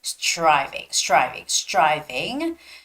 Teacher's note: when there is the T and R together it sounds more like a CH sound